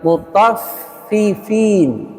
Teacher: FA bertasdid itu sifatnya Hamas dan rakhaw berarti dia mengalir nafasnya dan suaranya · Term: hamas dan rokhawah